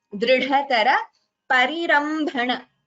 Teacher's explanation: Dr followed by Dha. Dha is Mahaprana. Dr is not a Mahaprana. It is Alpa Prana itself.